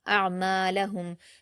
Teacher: عین پر جزم ہے، حمزہ کو عین سے ملائیں گے اور عین کو حلق سے ادا کریں گے اور قلقلہ نہیں کریں گے